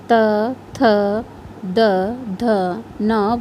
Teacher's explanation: वर्ग के अंतर्गत त थ द ध न वर्ण आते हैं जिनका उच्चारण करने में हमारी जीभ दंत को स्पर्श करती है इसलिए इन्हें दंत वर्ग भी कहते हैं